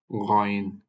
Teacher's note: এটা গলার উপরিভাগ থেকে উচ্চারিত হবে